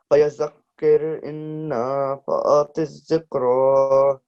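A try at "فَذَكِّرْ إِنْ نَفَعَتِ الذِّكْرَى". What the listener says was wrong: Okay, so this is fadhakkir. Okay, no ya in between. Fadhakkir. And then remember your ghunna sound. So inna.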